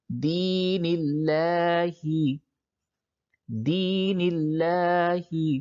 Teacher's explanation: اب یہ لفظ اللہ سے پہلے اگر زیر ہو تو لفظ اللہ کے لام کو باریک پڑھتے ہیں